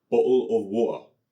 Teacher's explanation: の母語は英語です。まあ、もっと詳しく言うと、イギリス英語の南西弁なんですけど、日本語と全く同じ音じゃなくても、長音と促音に似ている音は一応あります。例えば、小さいつが入る促音なんですが、イギリスの方言の多くでは、t▁を発音しないというのが有名ですよね。例えば、有名な例で言うと、まあ、これを言うのがイギリス人としてちょっと痛いんですけど、イギリス人がペットボトルのことを▁bottle▁of▁water▁という人がいるんですよね。まあ、それがちょっと強調した例なんですけど、でも、まあ、あります。でも、 発音しないというより、本当は音を出すのを喉で一瞬止めるという感じで